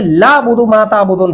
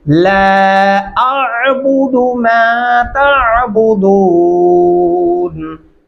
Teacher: इस तरह पढ़ना गलत होगा। अगर आप ला पढ़ते हैं तो फिर आप लाम को डायरेक्ट आइन के साथ मिला रहे हैं और आप ये अलिफ और मदे का वजूद खत्म कर देते हैं।